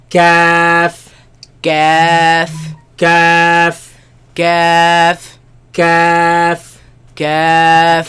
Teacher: Where the hard palate ends and the soft palate begins, that's where this letter comes from.